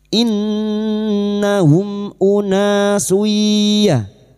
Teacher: mim sukun bertemu hamzah idhar safawi mim sukun dibaca jelas tanpa mendengung